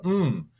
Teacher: mmm is a bilabial nasal